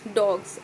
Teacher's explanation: S morpheme is pronounced Z